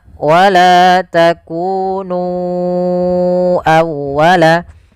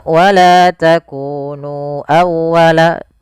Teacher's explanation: Kemudian pada lafal nu awal ya di sini sama hukumnya dengan lafal bima anzaltu yaitu adanya mad jaiz munfasil maka kita harus memanjangkan nunnya sepanjang empat atau lima harakat